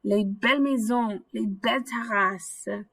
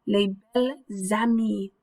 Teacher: a little bit of liaison where the S is going to move over to the A